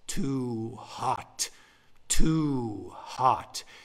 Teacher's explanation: When 2 syllables have equal weight, that's not an iamb, that's called a spondee. Both syllables have weight, spondee. · So each word has stress. That's a spondee.